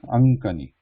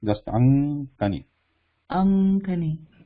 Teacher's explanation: So when we pronounce them together, this then this nga, it changes to nga, which is the block at the back of their throat. This nga is there is a block.